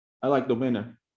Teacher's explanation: You actually hear the word winner there. So it becomes, you don't hear the T, and it happens to a lot of Americans.